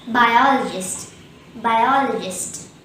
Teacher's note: Bi, all, gist. The second syllable all is stressed and there is one schwa in this word. Hence the correct pronunciation will be biologist.